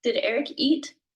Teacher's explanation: And you hear my voice go up. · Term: voice inflection